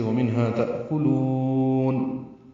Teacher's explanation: ومنہا صرف ایک واو کا اضافہ ہے، باقی وہی لفظ ہے، واو ہونٹوں کی ناتمام گلائی سے ادا ہوتی ہے۔ تأکلون حمزہ ساکن جھٹکے سے ادا ہوگا، کاف باریک ہے، لام کو لمبا کریں گے، واو مدہ کے بعد نون ساکن آنے کی وجہ سے ومنہا تأکلون۔